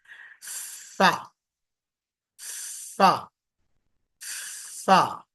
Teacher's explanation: चौथा हर्फ, ऊपर के दांत नीचे के होंठ पर लगाएंगे,